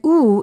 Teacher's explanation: O is a back vowel because the back part of the tongue goes up in the back part of the mouth